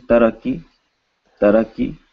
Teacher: with no aspiration so you should feel no air on your hand